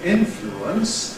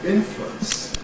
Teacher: We have a choice between saying ‘influence’ [ˈɪn flu əns] (three syllables) [ˈɪn flu əns] or squashing it into two syllables [ˈɪn flwəns]. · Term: compression